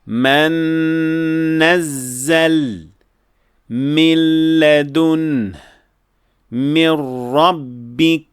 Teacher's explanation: So the nun is completely dropped and we move directly to the letter after it. So the ghunnah we hear in these examples is not the ghunnah of the nun sakina, but rather the ghunnah of the mim and the nun that follows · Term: full idgham